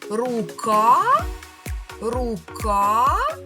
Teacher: Ми тягнемо голосний звук А, а він стоїть у другому складі. Отже, скісну рисочку ставимо над другим голосним звуком і кажемо, що другий склад у слові рука є наголошеним.